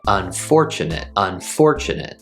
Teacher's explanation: we have four syllables unfortunate and the stress is on the second syllable